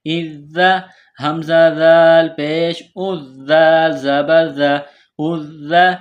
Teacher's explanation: ذال کو نرم پڑھیں گے، زبان تھوڑی باہر نکالیں گے